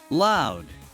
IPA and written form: laʊd (loud)